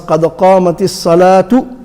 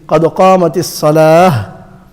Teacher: the goal ta, the round ta, it just turns into a ha. So you pronounce a ha, even though the ta is there, you don't read the ha and read the ta instead.